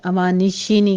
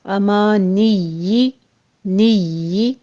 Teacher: امانی یا کے پر تشدید بھی ہے اور اس کے نیچے کسرہ بھی ہے، تو آپ نے شین کی ساؤنڈ نہیں لانی، امانی شینی کے نا، امانی نی صرف یا کی تشدید ادا کرنی ہے اور نیچے کسرہ کی آواز باریک کر لینی ہے